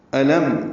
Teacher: لام باریک پڑھیں گے، میم سے ملائیں گے، اظہار شفوی ہوگا